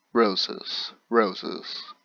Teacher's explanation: it feels like I'm putting most of the weight on the first syllable